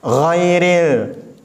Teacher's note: Lanjut. Ghairil, huruf gha itu seperti huruf g tapi enggak nyentuh. Di tenggorokan itu enggak nyentuh. Jadi bukan go, itu huruf g.